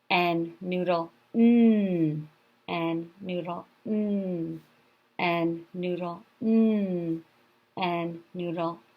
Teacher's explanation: My tongue goes to the roof of my mouth when I'm making the N sound.